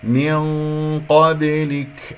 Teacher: لأنه جاء بعدها حرف القاف وهو من حروف الاستعلاء. مرتبة غنة الإخفاء تكون بحسب مرتبة القاف ثانية، إذا نفس المرتبة.